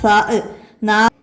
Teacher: നാവിൻ്റെയും മേലെ മുൻപല്ലുകളുടെയും തല ഇവിടെ നിന്ന് കാറ്റോടുകൂടി പുറപ്പെടുന്നു